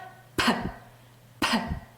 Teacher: 목에 손을 대보면 팍, 팍. 성대가 울리지 않는 새는 소리예요.